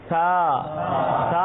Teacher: سا میں سیٹی نہیں بجے گی